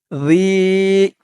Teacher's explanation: এখানে ইয়ার উপরে একটি সাকিন হবে, জি। আর জালের উচ্চারণটা একদম নরম হবে, জিব্বার মাথা উপরের দাঁতের মাথার সাথে লাগবে